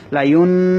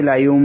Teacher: আমি এখানে লায়ুন বলি না, আমি বলেছি লায়ুম। এখানে নুনটাকে আমি মিম দিয়ে বদলে দিয়েছি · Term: ইকলাব